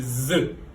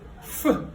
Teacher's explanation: quand on parle de z, ici, ça vibre. Quand on parle de f, ça ne vibre pas.